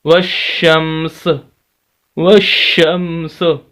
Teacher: سین کو پڑھیں گے لیکن زیر نہیں پڑھی جائے گی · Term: ساکن